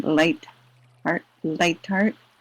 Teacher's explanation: Ta with a slight aspiration, as in light heart